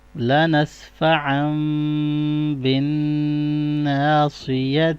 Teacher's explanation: stop sound میں ہم اس کو ہا ریڈ کریں گے کیونکہ سرکل شیپ کی تا ہے